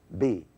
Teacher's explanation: B is made with the lower and the upper lip touching.